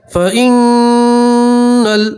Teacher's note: نون میں آپ گننا کریں گے، نون کی آواز کو آپ 2 سیکنڈ کے لیے ناک میں روک کے رکھیں گے